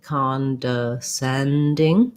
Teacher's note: have the ah vowel o often says ah when it's stressed so it has secondary stress cond and then main stress is on sending